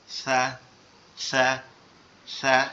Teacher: সাটা আমাদের জিহ্বার আগা উপরের দুই দাঁতের আগার সঙ্গে লাগবে, লেগে নরম আওয়াজে হবে